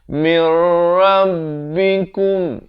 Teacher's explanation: Waqa'a alaikum, di sini idgham mislan saghir didengungkan dua harakat. Kummir, idgham bila gunnah, masuk tanpa dengung di sini. Asalnya min rabbikum jadi mir.